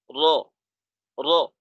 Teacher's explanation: র উচ্চারণের জন্য জিহ্বার আগার পিঠটা উপরের তালুর সাথে একবার লাগাইতে হবে। · র যখন উচ্চারিত হবে তখন জিব্বার আগা একটু কম্পনের মতো সৃষ্টি হবে, জিহ্বার আগাটা একটু কাঁপবে। আর এই ক্ষেত্রে একটা সতর্ক বার্তা হলো এই যে রর সময় তাকরারের পরিমাণটা যেন বেশি না হয়।